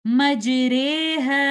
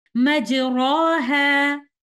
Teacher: یہاں پر ہم اس الف کی ادائیگی الف اور یا کے درمیان کی آواز نکالتے ہوئے کرتے ہیں، اور حرف را پر موجود زبر یا فتحہ کی ادائیگی فتحہ اور کسرہ کے درمیان کی آواز سے کی جاتی ہے، اس طرح سے مجریہا۔ · امالۃ کبریٰ کی آواز الف سے دور اور یا کے قریب ہے